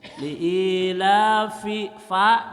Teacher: bibir bawah menyentuh gigi atas mengeluarkan angin. Fa, nah gitu, ya, nggak ada bibirnya.